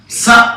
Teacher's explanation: స అనగానే దంతాలు పైకి లేస్తాయి దంత్యం అన్నారు దాన్ని